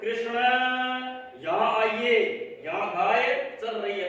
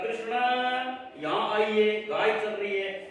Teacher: तो आपने जोर दिया ना कृष्ण न पे, न में जो है उसको थोड़ा सा खींच लिया, थोड़ा और ज्यादा खींचा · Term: प्लुत